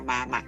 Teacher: la mayor fuerza la ejercemos en la última